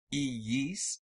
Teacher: these double I sounds are not diphthongs but two different syllables separated by a Y sound